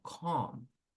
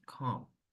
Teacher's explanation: Okay, so we have the expression calm down. Calm, noten que no pronuncio la L